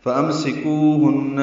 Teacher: فَأَمْسِكُوهُنَّ میں میم ساکن پہ اظہار ہے